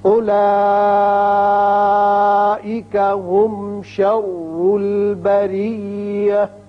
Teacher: اولئک مد متصل ہے، 5 حرکات کھینچیں گے.